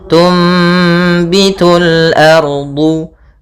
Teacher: cara membacanya adalah suara nunnya diganti dengan suara mim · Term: iklab